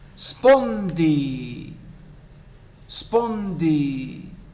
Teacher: Spondy, both are pronounced with the same level of stress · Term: spondaic foot